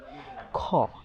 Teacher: খ এটা যখন উচ্চারণ করা হয় বাতাস মুখ থেকে বের হতে থাকে। বাতাস যদি আপনি দীর্ঘ সময় ধরে বের করতে চান তবুও সম্ভব। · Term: মহাপ্রাণ ধ্বনি